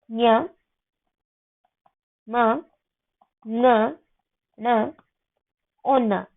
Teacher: ये अनुनासिक वर्ण है जिनका मुख और नासिका दोनों जगह से उच्चारण होता है।